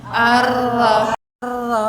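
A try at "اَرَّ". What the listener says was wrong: Ya.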